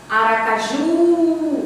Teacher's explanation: Você demora mais no ju. Então, o ju aqui é a sílaba tônica e é a última.